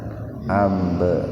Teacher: Ab qalqalah sugro. Jadi huruf ba-nya dipantulkan secara ringan.